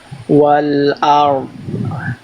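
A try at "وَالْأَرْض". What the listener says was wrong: Nah, di sini yang ngalir baru huruf ro doang. Dotnya masih kurang mengalir. Jadi bunyinya kayak gini tadi. Kalau saya contohkan wal ard, wal ard. Nah gitu. Dotnya belum ngalir, harusnya ngalir. Wal ard.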